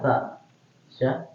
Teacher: kalau sya sudah dari tengah lidah dia